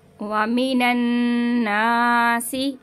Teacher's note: यहाँ पे नून मुशद्दद का गुन्ना करेंगे और अलिफ मद्दा को हल्का सा खींचेंगे।